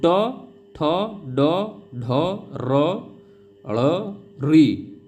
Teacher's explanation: इनका उच्चारण स्थान मूर्धा से होता है, या आप लोग या फिर मूर्धन्य से होता है, ये आप लोग याद रखेंगे।